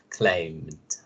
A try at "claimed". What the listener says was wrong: Okay, not climbed. Claimed.